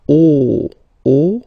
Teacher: don't be afraid to put your mouth really round, O, okay, so it's quite deep